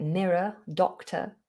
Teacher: Any word that ends with an ER or an OR, like mirror, doctor, we have that schwa sound